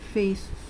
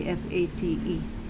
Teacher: Produce a soft th here, because if you will produce a t, you are going to sound like giving another word which has a different meaning. That would be fate.